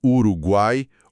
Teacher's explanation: Uma semivogal fraca, uma vogal forte no meio e outra semivogal fraca no final. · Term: tritongo